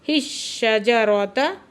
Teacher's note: फिर अगले हा को शीन के साथ मिला के पढ़ रहे हैं। हिश्शजरता, शीन मुशद्दद है, सख्ती से पढ़ेंगे और राब को पुर पढ़ेंगे।